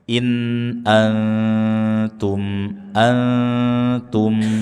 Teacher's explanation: In a antum nun sukun bertemu dengan ta ikhfa. Nun sukun kita baca dengan samar dan ujung lidah sudah menempel dengan gusi atas. · mim sukun dibaca dengan izharus syafawi, jelas di bibir, rapatkan kedua bibir, berikan gunnah meskipun naqiso, tidak sempurna.